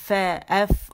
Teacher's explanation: سامنے کے اوپر کے 2 دانتوں کے کنارے جو ہیں وہ نچلے جو ہونٹ اس کے پیٹ پہ لگیں گے, ایف, نرمی کے ساتھ, فا, ایف, اور ہوا نکلتی ہوئی آپ کو محسوس ہوگی. جب آپ ایف کہیں گے ہوا نکلے گی, کیونکہ اس میں ہمس کی کوالٹی ہے, ہوا کا نکلنا محسوس ہونا, کیونکہ یہ خود وائس لیس لیٹر ہے اور پیچھے ہوا کے ذریعے سے آتا ہے, وہ اس کو ظاہر کرتے ہیں.